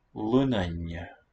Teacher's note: No longer N-D. But a long N with assimilation.